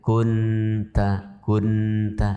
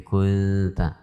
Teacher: Yang tersisa hanya sifat dengungnya nun. Sementara makhrajnya itu sudah berpindah kepada makhrajnya ta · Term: ikhfa